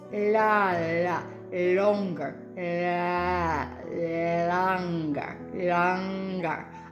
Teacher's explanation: with an Irish accent it's l it's like your your tongue is going up a little bit further back than it does if you're speaking with a Canadian accent